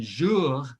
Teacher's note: and then jour, that's a uvular R